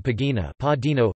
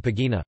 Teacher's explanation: in occitan the stress is moved to the penultimate syllable